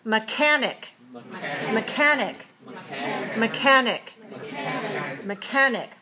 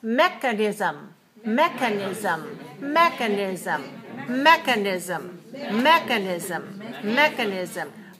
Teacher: watch the difference between mechanic, 3-2, stress on the second syllable, and mechanism, 4-1. The second syllable is not stressed.